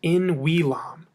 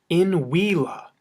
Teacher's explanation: It's a long A and there's no M there.